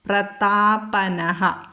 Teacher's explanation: താ പറയണം, പാ പറയണം, ഖരമാണ്, ശ്രദ്ധിക്കണം.